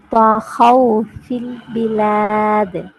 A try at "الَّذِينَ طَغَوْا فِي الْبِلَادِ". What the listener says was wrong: திருப்பி தால கலக்கணும் கடைசியில.